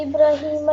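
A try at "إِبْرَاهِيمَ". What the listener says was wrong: बेटा इब्राहिम का जो रा है इसको थोड़ा लंबा करो, खड़ी ज़बर है, ठीक ऊपर आगे अलिफ आ रहा है।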